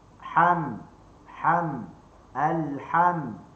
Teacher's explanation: Huruf mim, bibir atas dengan bibir bawah.